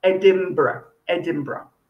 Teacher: advice it sounds like an m before the b so edem it's written in n but you say it like an m for mother so it sounds like edinburgh edinburgh very good okay so now